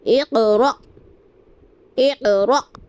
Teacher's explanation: ہمیں قاف پر بھی قلقلہ کرنا ہے کیونکہ قاف حروف قلقلہ میں سے ہے